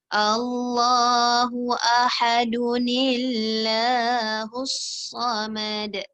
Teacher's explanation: Baris 2 di atas, 2 di bawah, 2 di depan. Bertemu dengan alif wasal. Maka pada ketika itu harus kita adakan nun kecil. · Jadi Allah dia tak boleh baca tebal, kena baca tipis pasal nun tu baris bawah.